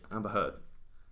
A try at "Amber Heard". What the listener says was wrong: It's got a D in it. Heard.